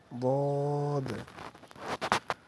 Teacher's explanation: জিহ্বার গোড়ার কিনারা উপরের মাড়ির দাঁতের গোড়ার সঙ্গে লাগাইয়া বদ উচ্চারিত হয়